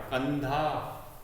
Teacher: तो न का उच्चारण आ रहा है, कंधा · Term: अनुस्वार